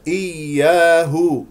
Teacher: الياء مشدده ايا نسمع صوت الياء الساكنه من الياء المشدده اياه الهاء مضمومه نظم الشفتين